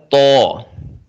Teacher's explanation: تو کا مخرج ہے زبان کی نوک اوپر کے دانتوں کی جڑ سے